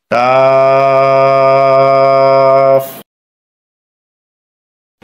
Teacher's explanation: জিহ্বার গোড়ার একটু আগে তালুতে লাগবে, স্বাভাবিক উচ্চারণ হবে, শেষে উপরের দাঁতের আঘাত নিচের ঠোঁটে লাগিয়ে যাবে।